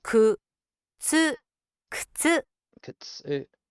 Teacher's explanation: But in conjunction with the binder before it, it pulls that into more of the middle of the focused word, and ku becomes k. The u sound is truncated, much the same as arimas and imas.